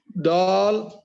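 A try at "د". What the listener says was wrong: दाल को मोटा नहीं करेंगे, दाल को बारीक पढ़िए।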